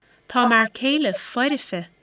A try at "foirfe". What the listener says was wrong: Okay, there we have the epentasis of the vowel between liquid and fricative. Foirife. Foirife. It sounds more like F-O-R-I-F-E. The I is not meant to be sounded as a distinct vowel there. It shows the quality of this consonant group in between.